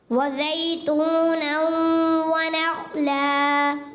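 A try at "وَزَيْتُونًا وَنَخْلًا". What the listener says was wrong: जा की अदायगी दोबारा।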